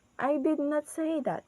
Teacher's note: So in the word did, our voice is goes up, and then in the word that, our voice is goes down.